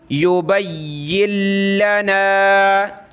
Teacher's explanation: اس یا کو ہم نے سخت کرنا ہے تشدید کی وجہ سے